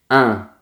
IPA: ɛ̃